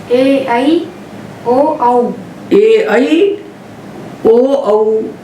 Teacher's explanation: तो ए आई और ओ औ इनका ह्रस्व नहीं होता। इनको 2 मात्रा के काल में ही बोलना चाहिए, तब ये शुद्ध होंगे। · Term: दीर्घ